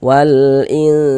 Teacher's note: Kemudian di bagian inya itu suaranya itu kita tahan ya. Kita panjangkan sejenak kira-kira sepanjang dua harakat. Karena kita gunahkan, kita dengungkan.